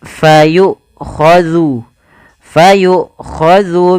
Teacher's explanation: ketika Hamzah itu mati maka tertahanlah dua-duanya nafas dan suaranya